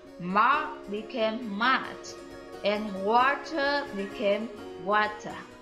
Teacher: the post-vocalic R were lost in the words such as mark became mart and water became water.